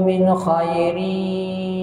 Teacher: Wa ma taf'alu min khairin ya'lamuhu Allah. Min khairin, nun mati bertemu dengan kha idhar halqi.